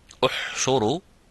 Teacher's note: So what happens, you say the you, the ya with the dhamma, you, and then it's in the same time you bring it back into the position of the sukun as you say ah, without making that forward of the dhamma. So the shape of the dhamma has to disappear when saying the ha.